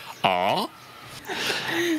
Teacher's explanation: On est entre le A et le O.